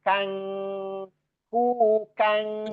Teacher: Ikhfanya itu lebih dominan ghunahnya atau dengungnya. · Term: gunnahnya